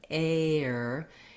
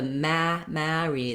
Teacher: diphthong that's bright so it's kind of air and the mary the mouth is more open and we have more of a lax sound going into that r